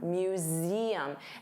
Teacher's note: notice you have that voiced Z sound, museum. And there are 3 sounds, museum, museum, museum.